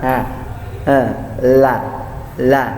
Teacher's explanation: Ya, ujung lidah bersentuhan dengan gusi atas.